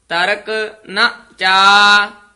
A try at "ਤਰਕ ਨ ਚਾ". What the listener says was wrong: ਤਰਕ ਪਦ ਤੇ ਠਹਿਰਾ ਦੇ ਦੇਣਾ। ਤਰਕ ਨਾ ਚਾ, ਨਚਾ ਨਹੀਂ ਕਹਿ ਦੇਣਾ।